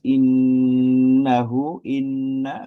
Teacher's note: nun tasdid itu hukumnya pasti ghunah. Kita tahan lebih lama ya. Dan suara juga masuk hidung